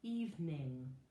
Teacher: we've got the two different kinds of N right next to each other, separated just by one vowel sound